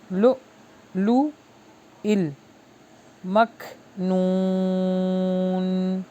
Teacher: یہاں پہ جھٹکا آئے گا کیونکہ حمزہ کے اوپر جزم ہے